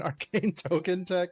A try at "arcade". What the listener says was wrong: Arcade, not cane. Aid.